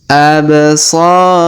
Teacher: Huruf so kita panjangkan 2 harokat karena terdapat alif di depannya.